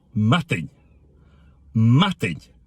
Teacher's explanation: the initial stress is important. We hit the first syllable really hard. The D is not an English T sound.